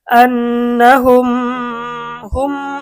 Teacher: মিম সাকিনের পর মিম আসিলে উক্ত মিম সাকিনকে গুন্নাহের সাথে মিলিয়ে পড়িতে হয়। এখানে মিম সাকিনের পরে মিম আসছে, তাহলে এটা মিম সাকিনের ঈদগাম গুন্না সহ মিলিয়ে পড়িতে হবে।